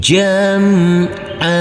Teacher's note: Huruf Ain yang berfathah tanwin ini karena kita wakafkan, kita berhenti, maka tanwinnya kita hilangkan dan berubah menjadi fathah. Dan kita baca panjang dengan panjang 2 harokat.